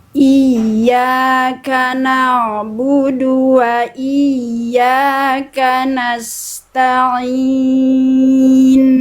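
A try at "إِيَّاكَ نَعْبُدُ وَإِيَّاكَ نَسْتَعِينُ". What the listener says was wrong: Sekali lagi, bagus.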